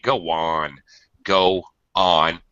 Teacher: I Bridge the the two o's and go and on with a W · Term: Glide